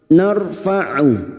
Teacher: ra sukun yang didahului fathah kita baca tafim narfau huruf Ain Alif kecil di atas dua harakat kita panjangkan · Narfa'u darajatim man nasha. Nar ra sukun yang didahului fathah kita baca tafkhim